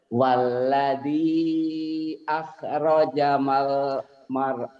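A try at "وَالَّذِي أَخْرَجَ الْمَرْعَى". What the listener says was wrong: kan kalau orang tua mah begitu Pak, jadi mulut itu suka sepet gitu ya, suka kelewat. Waladzi akhrajal. Bapak mah tadi kayak sama seperti Bu Warsining sih kalau ketemu huruf mati. Arjal. Walladzi akhrajal mar'a.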